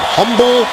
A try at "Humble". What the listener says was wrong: The H is silent, my friend.